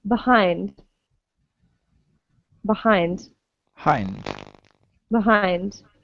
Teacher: we can pronounce the e as a neutral vowel